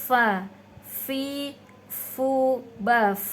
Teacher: Jadi fa itu harus ada aliran suara, ada desisnya. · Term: hamas